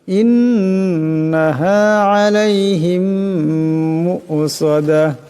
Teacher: মিম সাকিনের পর মিম আসছে, এটা ঈদগাম হয়ে যাবে, ঈদগামের একারে পরিমাণ গুণনা হবে।